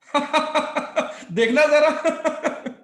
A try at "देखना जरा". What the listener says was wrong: आप थोड़ा सा और ऊपर जाएंगे.